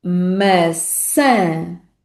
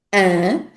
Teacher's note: O grande desafio desta palavra é a vogal nasal final an. E esta vogal nasal final é importantíssima para distinguir a palavra maçã de outra palavra que também existe em português, que é a palavra massa.